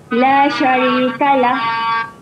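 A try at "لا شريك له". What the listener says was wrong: Okey, memang pendek saja. La syarikalah. Jangan panjangkannya, jangan la syarikalah. Ada yang tersilap. Diingat semua yang bacaan akhir bacaan panjang ya. Yang itu tidak ada huruf alif, tak ada huruf waw, tak ada huruf ya. Jadi bacaannya pendek ya.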